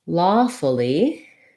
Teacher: So in lawfully, we have first syllable stress. This letter A says the aw vowel, which we often spell like AW, like in law.